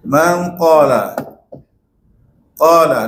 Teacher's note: Bila habis dengung tu barulah qa. Kita tekan betul untuk sebut huruf qa. · Dengung. Suara ni kita kena alir ke hidung kan? Alir ke hidung.